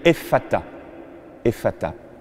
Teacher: C'est une consonne constrictive ou encore fricative en linguistique. Ça souffle.